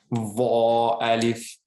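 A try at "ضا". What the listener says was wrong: It could be a bit, I feel like you're pressing too much on your tongue. It's like, it's okay, but you can relax a little bit as long as you get the vibration.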